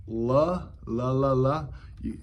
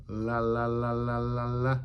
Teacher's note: the tip of your tongue is touching the bump behind your top teeth which is called The alvea Ridge